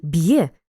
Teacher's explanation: у слові б'є дві букви однак три звуки адже є передаємо як йе